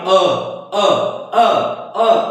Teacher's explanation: और जो मध्य स्वर है, जो जीभ के मध्य भाग से बोले जाते हैं, यानी हम किसी भी स्वर को जब उच्चारित करते हैं तो हमारा जो जीभ है, जीभ ये सीधा ताड़ से मध्य में बैठी रहेगी, न कि पीछे भागेगी न तो आगे। अ बोलकर देखेंगे तो डायरेक्ट जीभ जो है मध्य भाग कार्य करेगा।